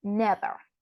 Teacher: in the word never the accentuation is in the first syllable